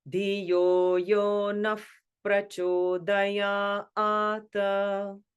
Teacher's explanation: Ya, ata, so that goes middle and high together because it's a long A, the horizontal line across the top with the two vertical lines above it.